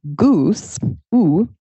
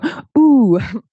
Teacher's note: This vowel, it's made with the tongue and the jaw high and the tongue in the back